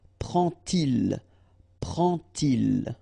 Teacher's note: And so this little d here is in red just to show you that you won't pronounce it like d to make the liaison, but you will pronounce it like t